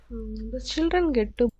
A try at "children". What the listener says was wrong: There it's kind of borderline, but I want to hear more of a ch.